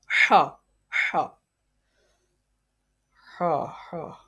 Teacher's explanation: ha is pronounced from the middle part of throat